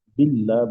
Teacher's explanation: آگے باللہ، جی، باللہ یہ اصل میں ہے بی اللہ، بی اللہ، یہ اصل میں ہے. وسط کلام میں لام تعریف کا حمزہ حذف ہو جائے گا. تو لفظ اللہ کا ماقبل چونکہ ہاں پر بی اللہ، با پر کسرہ ہے، تو قاعدے کے مطابق اللہ کو ماقبل کا جو کسرہ ہے اس کی وجہ سے باریک پڑھیں گے. · اللہ کو ماقبل کا جو کسرہ ہے اس کی وجہ سے باریک پڑھیں گے. تو باللہ بن جائے گا، بی اللہ سے باللہ بن جائے گا. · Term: حمزہ گر گیا